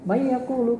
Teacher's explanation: May yaqulu itu takhfif, tapi hukumnya idgham bil gunnah, dengan gunnah.